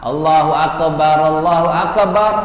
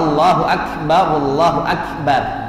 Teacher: makhraj dari kaf itu ada hamesnya. Hames itu adalah ngalir udara.